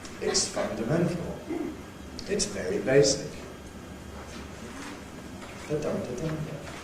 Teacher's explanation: the rhythm of fundamental is the same as the rhythm of very basic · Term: two stresses